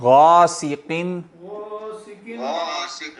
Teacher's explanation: یہاں بھی قاف موٹی ہے لیکن بغیر کلکلے کے، کیونکہ ساکن نہیں ہے، اور غائن بھی موٹا ہے